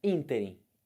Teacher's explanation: Ínterim é proparoxítono. Quem é a sílaba forte do ínterim? O in. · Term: sílaba tônica